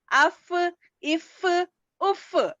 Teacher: नीचे के होंठ के गीले हिस्से ऊपर के दांतों के किनारे को लगाने से फा अदा होता है